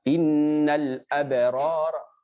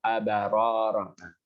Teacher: jelaskan betul-betul mematikan hurufnya, habis itu muncul qalqalah yang sedikit